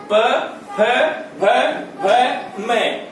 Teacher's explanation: इन सब का उच्चारण स्थान ओष्ठ है